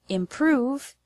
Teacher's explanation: The word improve has the stress on the second syllable, prove.